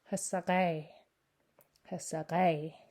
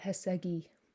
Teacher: The K turns to a back G, which I forgot to underline. And a vowel slips in there, so it gets pronounced hasakai.